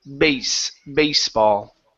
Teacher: pronounced baseball with an unvoiced s